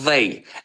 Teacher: th hərf birləşməsi pəltək v səsi verir. Pəltək, yəni bu sözü they olaraq demirik.